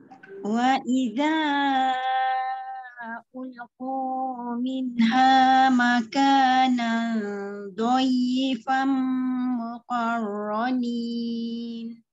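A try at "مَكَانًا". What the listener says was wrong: Tebal sikit.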